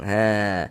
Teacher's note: Mad thobi'i panjangnya dua harakat.